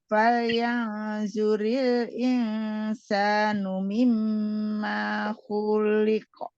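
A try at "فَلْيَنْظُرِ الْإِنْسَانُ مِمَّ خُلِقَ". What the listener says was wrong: Ma-nya pendek, Bu.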